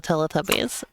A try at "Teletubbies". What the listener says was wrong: Actually, it's actually Teletubbies is a British franchise. You pronounce it Telly, not Tella.